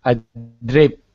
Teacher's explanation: Your tongue is tapping, and it shouldn't.